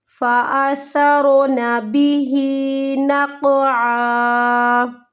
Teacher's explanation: آ کو کھینچنے کی غلطی، آ کو ہمیں نہیں لمبا کرنا